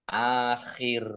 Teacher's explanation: Khok ya, khok itu di tenggorokan. Akhir. Kof lam tanda wakof boleh terus tetapi berhenti lebih baik.